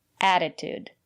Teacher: the first letter T is pronounced as a fast D because the syllable after the letter T is not stressed add it add attitude and the second letter T is pronounced